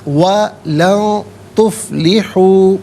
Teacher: لن میں آپ دیکھیں نون ساکن ہے، اس کے بعد تا حرف اخفا ہے، تو نون ساکن کو اخفا کے ساتھ پڑھا جائے گا، یعنی ناک میں آواز لے جا کر گنگنانا